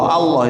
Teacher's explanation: Jadi lidah kena angkat, tebalkan dia. Allah, kena angkat lidah, kena langit-langit ke atas.